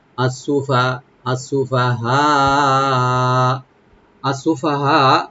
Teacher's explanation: আর ফাটাকে ফার উপর জবরটা একটু right দিয়ে পড়তে হবে যেন সাকিন বলা না হয়